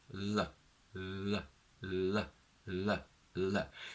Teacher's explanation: For the L sound, on the other hand, I want you to focus on creating more space for the air to move inside your mouth, which means that the tongue should somehow be a little bit softer and more relaxed, although it still has to touch the alveolar ridge